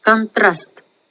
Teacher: But the first vowel o changes into a, so it's not pronounced as contrast, but contrast, contrast. So you can hear the last a being emphasized, contrast, and the first vowel is not emphasized, so it changes into a.